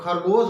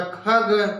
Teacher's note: जब खरगोश बोलेंगे आप या खग तो हवा लग रहा है ज्यादा निकल रही है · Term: महाप्राण